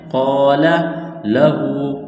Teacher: تو ایک الف کے برابر اس کو کھینچنا ہے، قال لہو، ہا الٹا پیش ہوں، ایک الف کے برابر کھینچنا ہے